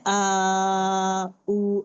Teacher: मैं सिर्फ इतना ही आवाज को आ करते हुए होठों को गोल कर दी।